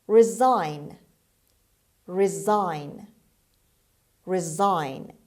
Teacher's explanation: the stress is on the second syllable on s and s in this word is pronounced z resign · resign the stress is on the second syllable on s and s in this word is pronounced z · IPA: /rɪˈzaɪn/